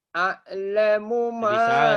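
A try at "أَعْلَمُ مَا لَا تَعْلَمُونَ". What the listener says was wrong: Ainnya bukan. Tenggorokan. A'lamu.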